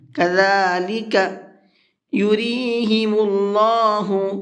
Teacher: اللہ کے لام کو پر کر کے پڑھیں گے، منہ بھر کے پڑھیں گے، اس لیے کہ اللہ کے لام سے پہلے پیش ہے۔